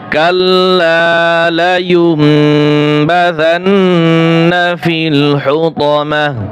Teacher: টি আর হবে না, হুতামাহ হা উচ্চারণ হবে